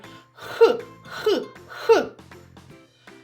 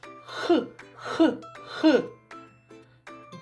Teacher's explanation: а його спинка піднята догори так що язичок схожий на гірку повітря яке ми видихаємо зустрічає перешкоду це спинка язичка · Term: звук х